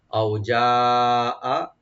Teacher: এখানে চার আলিফ টানবো আমরা মাদ্দে মুত্তাসিল